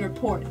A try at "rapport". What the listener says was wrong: The T is silent.